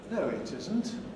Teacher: This is a divided fall plus rise because isn't is accented here. It's new information.